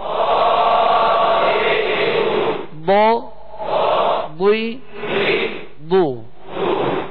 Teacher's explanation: ان حروف میں سے یہ ضاد بھی ہے، لہذا ضاد کو پر پڑھیں گے اور زبر زیر میں ہونٹ گول نہیں ہوں گے